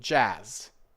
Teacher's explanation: So, it's not just a sharp ah, it's more relaxed like all the English vowels. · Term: longer ah sound